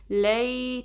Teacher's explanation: آئین کو درمیانے حلق کے حصے سے نکالنا ہے